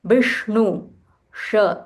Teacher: this is Murdhanya Sh, so you'll have to roll your tongue